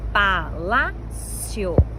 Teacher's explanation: paroxítona penúltima sílaba mais forte e terminada em ditongo porque nós temos uma sequência de vogais na mesma sílaba, uma semi e uma vogal.